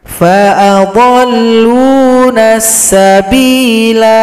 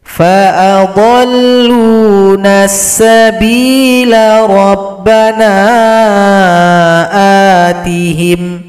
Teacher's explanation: Kalau berhenti dipanjangkan dua ketukan